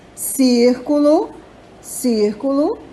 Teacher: então a palavra círculo a sílaba tônica é a antepenúltima